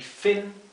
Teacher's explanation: la i se pronuncia más cerrada que la i del español no es fin es fin es una I más cortita y